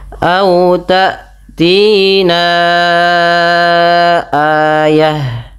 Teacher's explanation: Panjangkan bunyi suara na sepanjang empat atau lima harakat. Karena pada lafal ini terdapat hukum tajwid berupa bacaan mad jaiz munfasil. · Sebabnya yang kami sampaikan tadi yaitu adanya mad thabi'i bertemu dengan hamzah. Jadi bagaimana kita melafalkannya adalah kita panjangkan empat harakat